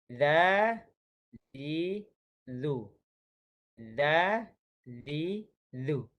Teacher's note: hujung lidah dikeluarkan antara gigi atas dan juga gigi bawah. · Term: huruf zal